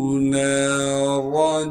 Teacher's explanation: نون کے بعد الف مدہ ہونے کی وجہ سے نون کو ایک الف کے مقدار کھینچیں گے اور را کو موٹا کر کے پڑھیں گے کیونکہ را پر زبر ہے۔